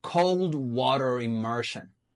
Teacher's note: Those 3 words are content words. They are adjective and noun combinations. So those words are strong. You have to pronounce them with prominence. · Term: strong words